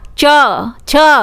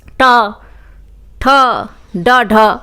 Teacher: ये जो तालव्य है वो आगे की ओर थोड़ा, जीभ लगी ऊपर ही, और मूर्धव्य थोड़ा सा पीछे